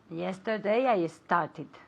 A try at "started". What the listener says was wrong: Very good. Started, okay? Con una sílaba aparte, okay?